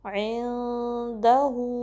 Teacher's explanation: हु के लिए होंठों को सही गोल करेंगे